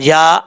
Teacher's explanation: یا کے اوپر کھڑا زبر ہے، ایک الف کی مقدار لمبا کر کے پڑھیں گے